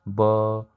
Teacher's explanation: For example ब, आप लोग ब को बोलो तो आप लोग के गले में एक वाइब्रेशन होगा, आप लोग हाथ रख के गले पे ये फील कर सकते हो, आप लोग ट्राई कर सकते हो ब। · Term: वॉइस्ड प्लॉसिव्स